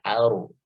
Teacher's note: Kemudian di sini ada alif lam qamariyah ya, al ardi. Kemudian ardi ro-nya dibaca tafkhim ya, dibaca tebal. Ardi ya. Jadi tidak datar bibirnya ya, tidak ardi tapi aru, agak diangkat.